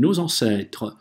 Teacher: с открытым ртом на «e» говорим nos ancêtres, здесь на конце «э» читаем, что между трех согласных она оказывается.